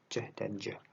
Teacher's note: Kita bisa lihat di sini bahwa lidah ya menyentuh atas mulut kita, bagian mulut kita di dalamnya. Kemudian ceh itu lidah kita hanya menutup kemudian membuka kembali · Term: affricates